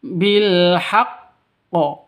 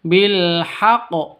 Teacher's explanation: kalau ada tasydid artinya qfnya ini ada dua cuman digabung jadi satu